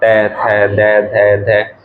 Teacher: जो हमारी जीभ है वो दांत पे टच करेगी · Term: दंत्य